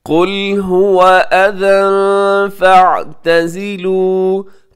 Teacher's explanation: कुल में क़ाफ़ मोटा पढ़ा जाएगा